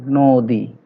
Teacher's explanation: যদিও নর সাথে অ আছে কিন্তু আমরা উচ্চারণ পাচ্ছি নো, ওকার দিয়ে পাচ্ছি নদী